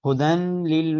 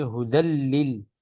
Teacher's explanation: تو نون را کے ساتھ مل رہا ہے، ادغام ہو رہا ہے، لیکن غنہ نہیں ہوگا